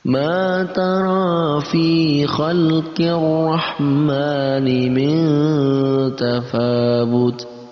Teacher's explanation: Khalqir rahman, ada alif lam syamsiyah karena bertemu dengan alif lam bertemu dengan huruf syamsiyah yaitu huruf ra. Maka alif lamnya kita tidak baca tapi langsung membaca ra-nya dan kita tambahkan tasydid di sana